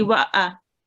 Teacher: Just remember, this alif is not blank, so you say wa'a, and you do not prolong any of the vowel or the alif.